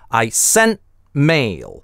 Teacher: здесь мы делаем гортанную смычку, и возникает пауза.